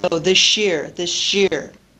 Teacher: if we have S Plus y the sound that's produced the new sound that's produced is sh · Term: coalescent assimilation